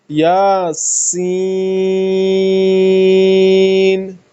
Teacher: سین میں اس سٹی کی آواز ہونی چاہیے، اپنی جگہ سے ادا کریں